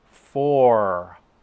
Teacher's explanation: For, on the other hand, has an R sound, and so the tongue is brought all the way back. If these are my teeth, and this is the roof of my mouth, the sound looks like this.